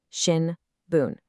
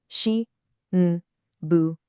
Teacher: But in Japanese, that's four mora, four equal beats, shi, n, bu, n.